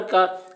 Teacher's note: یا کاف زبر کا، کاف کے اوپر زبر ہے، زبر کو جلدی پڑھیں، تھوڑا بھی نہ کھینچے